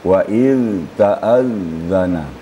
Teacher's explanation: Zal tidak boleh suara diputuskan tapi harus mengalir waiz waizta kemudian tasdiknya taazzana tidak boleh disyiddahkan tapi harus rakhawa ya waiz taazzana dengan suara lembut iaitu apabila lidah bertemu dengan